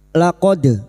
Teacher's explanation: Laqod dal sukun yang mati asli di tengah kalimat qalqalah sugroh. Jangan lupa dipantulkan.